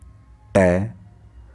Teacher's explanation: जैसे हम ट बोलते हैं ट, तो हमारी जीभ देखिए कैसा आकार लेती है और कहाँ पे छूती है? मूर्धा पे छूती है। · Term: मूर्धन्य